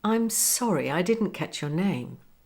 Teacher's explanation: the intonation slowly Rises but the words are spoken quite quickly